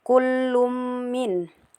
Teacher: Kemudian di situ terdapat juga hukum idgam bila, maaf terdapat hukum idgam bigunna karena tanwin bertemu dengan mim jadi dibaca lebur dan dengung dua harakat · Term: idgham bi gunnah